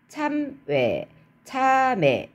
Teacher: 둘째 음절 이하로 내려가면 우리가 아주 자연스럽게 단모음으로 아직까지는 발음하고 있어요